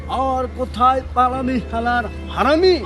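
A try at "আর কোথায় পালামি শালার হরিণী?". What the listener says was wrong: আহা, নাকে না মুখে বলো, মুখে, নাকে না মুখে বলো। হারামি না, হরিণী হরিণী হরিণী। আচ্ছা তো বলো তো, হারামি বলো না, হরিণী বলো।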